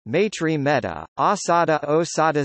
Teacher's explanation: Sanskrit ai and au always monophthongize to Pali e and o